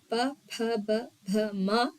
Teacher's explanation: ಈ ತುಟಿಯ ಸಹಾಯದಿಂದ ಉಚ್ಚಾರಣೆಯಾಗುವ ಅಕ್ಷರಗಳನ್ನ ನಾವು ಓಷ್ಟ್ಯಾಕ್ಷರಗಳು ಅಂತ ಕರಿತೀವಿ.